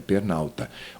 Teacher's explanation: O fonema A se funde e vira pernalta.